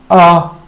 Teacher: जिनके उच्चारण में जीभ का मध्य भाग सक्रिय रहता है उसे मध्य स्वर कहते हैं